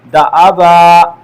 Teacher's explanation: ایک الف کی مقدار میں اس کو کھینچ کر وقف کریں گے، دا ابا، اس طرح پڑھیں گے۔ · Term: الف مدہ